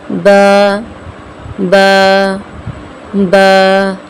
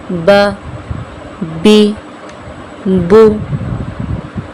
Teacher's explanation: با، میم اور واو کا مخرج بھی شفتان ہے، یعنی دونوں ہونٹ ہیں، مگر فرق یہ ہے کہ با دونوں ہونٹوں کے تری والے حصے سے ادا ہوتی ہے